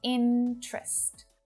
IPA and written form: 'ɪn trəst (Interest)